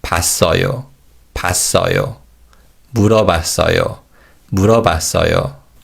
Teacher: the W glide vowel wa in 봤어요 is weakened, and it sounds like a.